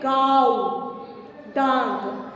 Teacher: ఏసీ స్వరం కే ఉచ్చారణ నాక్ ఔర్ ముఖ్ సే హోతా హై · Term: అనునాసిక్